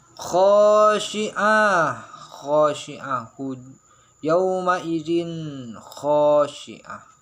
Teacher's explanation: Tanwin bertemu dengan kha, nah, itu ikhfa hakiki, harus dibaca dengan samar, dengan dengung, tapi dengungnya itu harus ringan, jadi tidak terlalu nampak gimana ya, tidak terlalu nampak dengungnya seperti itu ya.